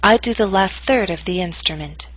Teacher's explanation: Note that primary stress is in the middle of the statement. Your voice will continue to fall after the word third.